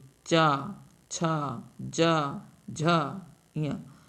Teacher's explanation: च वर्ग का उच्चारण स्थान तालू है · च वर्ग के उच्चारण में जिह्वा जो हमारी है वो तालु को स्पर्श करती है